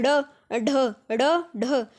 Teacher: जो हमारी जीभ है वो ऊपर पहले हमारे मुख के ऊपर पार्ट जो होता है उसको टच कर कर दोबारा वापस आती है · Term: उत्क्षिप्त व्यंजन